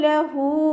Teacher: ഹൻ്റെ കൂടെ വാവ് സ്വയറയാണ് വന്നിട്ടുള്ളത്, 2 കൗണ്ട് നീട്ടാൻ ശ്രദ്ധിക്കുക